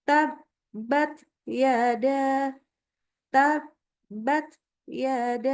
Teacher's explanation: bukan menjadi desis, tetapi ini hanya lepaskan ujung lidah sehingga keluar udaranya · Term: hames